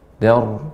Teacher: Dan ra ini getarannya halus sedikit, ya, tidak banyak, namun dia tafkhim, tebal, karena ra yang sukun karena waqaf dan sebelumnya huruf yang berharokat fathah.